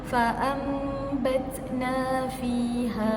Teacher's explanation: Kalau baris tanwin dia di bawah, mim juga di bawah. Okey, jadi untuk bacaan hukum iqlab, kita perlulah rapatkan bibir kita.